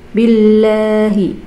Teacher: Ini lafadz Allah yang dibaca tipis, karena sebelum lafadz Allah itu ada tanda baca kasroh ya. Kalau yang dibaca tebal itu kan kalau tidak salah sebelum lafadz Allah itu ada fathah atau dhammah.